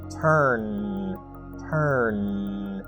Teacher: Notice that you feel a vibration on the final N sound. That means that it is a voiced sound.